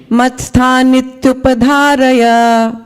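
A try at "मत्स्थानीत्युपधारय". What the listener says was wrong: Just one little thing. That last line, matsthanit, it's not a short I, it's a long one. Matsthanithyupadharaya. Long, short vowels, very important.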